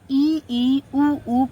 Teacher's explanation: ई, ऊ, ये हमारे दोनों क्या है, ये हमारे दोनों संवृत में आते हैं। संवृत मतलब मुख का लगभग बंद होना